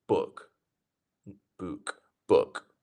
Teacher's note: say book with a quick uh uh sound